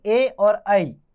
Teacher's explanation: ए और ऐ, ये कंठ और तालु दोनों जगह से मिलाकर बोले जाते हैं, इसलिए इन्हें कंठ तालव्य वर्ण कहते हैं।